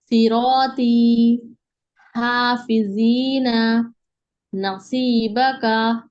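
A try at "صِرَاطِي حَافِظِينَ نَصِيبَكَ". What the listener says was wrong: माशाल्लाह, परफेक्ट,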